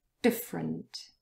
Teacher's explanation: And different, there is a very short schwa sound between the f and the r, but it could also disappear entirely and then it would sound like this, different. So you move from f to r without any vowel sound in between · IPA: /ə/